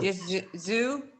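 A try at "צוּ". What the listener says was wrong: Sue. Sue. You have to get that TZ or TS.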